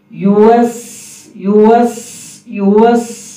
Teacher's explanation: سیٹی کی آواز باریک ہو